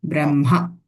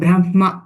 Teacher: Ba is not Mahaprana